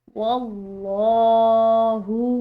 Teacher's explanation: لفظ اللہ کی لام پورا ادا کی گئی ہے واو کی زبر کی وجہ سے